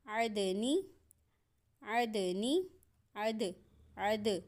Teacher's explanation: دال کی آواز پلٹ کے آ رہی ہے، جھٹکا لگ رہا ہے ہلکا سا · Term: قلقلہ